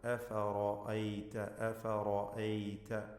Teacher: എല്ലാത്തിനെയും തർക്കീഖ് ചെയ്ത് നേർപ്പിച്ചുച്ചരിക്കണം. റാഇനെ തഫ്ഖീം ചെയ്യണം, പെരുപ്പിച്ച് സ്വരഭാരത്തോടെ